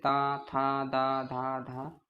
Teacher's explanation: तो हमारी जीव है वो दांतों से स्पर्श करती है · तो हमारी जो जीभ है वो दांतों से स्पर्श करती है, इसलिए इनको दंती स्पर्श व्यंजन बोलते हैं। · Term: त वर्ग